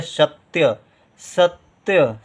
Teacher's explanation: ता का उच्चारण बहुत कम देर के लिए हो रहा है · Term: आधा ता